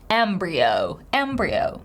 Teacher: O diphthong at the end, with a stress on the first syllable. Embryo, embryo.